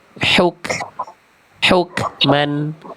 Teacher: Jangan ada e-nya. Karena kaf tidak punya sifat qalqalah. Jadi tidak boleh dipantulkan. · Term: kaf sukun